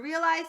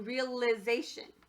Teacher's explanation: I changed from the long I sound to a short I sound. So it went from realize to realization.